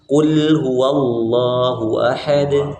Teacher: Ini qulnya lamnya tipis